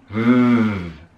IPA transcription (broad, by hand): v